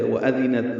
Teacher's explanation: ذال کو نرمی سے پڑھیں گے، تا ساکن پہ ہمس ہے